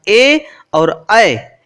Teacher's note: आगे है ए दैतोह कंठ तालु, अर्थात ए और ऐ इन दोनों का कंठ और तालु उच्चारण स्थान होता है